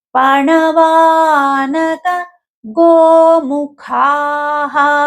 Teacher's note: పణవా వ కు దీర్ఘం ఉంది దీర్ఘాక్షరం అది దీర్ఘంగానే పలకాలి.